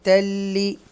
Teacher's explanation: ادغام یرملون میں سے ہے اور لام کی ساؤنڈ جو ہے وہ کلیئر ہوگی